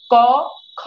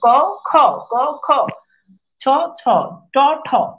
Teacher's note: কারণ এগুলো উচ্চারণের সময় আপনার এই যে স্বরতন্ত্রটা কাঁপে না, অঘোষ মানে কাঁপে না। যখন স্বরতন্ত্রটা কাঁপে না, যেমন দেখেন ক খ, দেখেন এই জায়গাতে কিন্তু খুব কাঁপে না, ক খ, ক খ, ছ ছ, ট ঠ।